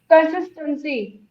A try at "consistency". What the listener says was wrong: So you're using that word in a way, it's the whole word is not sounding, right? Consist is the only sound that I'm hearing. Consistency is almost inaudible, right? clearly pronounce it every time you say, right? But the words have to be pronounced clearly, right?